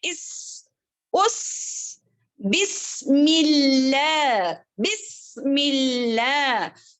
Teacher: बिस्मिल्लाहिर, देखें बिस, बा खुश्क होंठ, यानी कि तर होंठ, यानी कि गीले गीले होंठों से अदा होने वाला बा, बा, बिस सीन जो है सीटी वाली आवाज आनी है